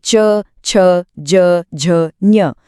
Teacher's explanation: तो पूरा च वर्ग, यानी च, छ, ज, झ, ञ, ये सब तालव्य हैं। इनको बोलते समय हमारी जीभ ऊपर तालु को टच करती है। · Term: तालव्य वर्ण